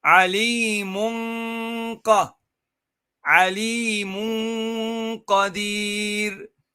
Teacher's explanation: So the noon, the Alimun here, where there is the tanween, the dhammatain, then this noon here will go on to the articulation point of qaf. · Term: tafkhim